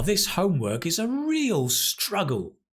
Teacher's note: Put the stress on real